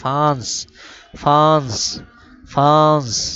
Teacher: আমি গুন্না করতেছি ফাস মানে নুন নাকে উচ্চারণ করছি